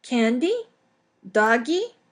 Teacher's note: the first stage is just using an individual word with Rising intonation